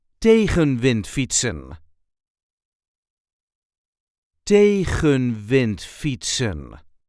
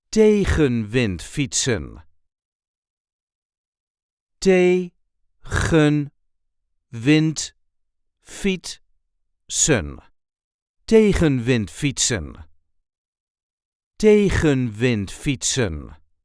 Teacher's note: There is a light emphasis on the first syllable.